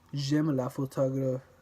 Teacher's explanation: The emphasis is on the last syllable in a group in words. In the sentence j'aime la photographie, there's a slight elongation of phi.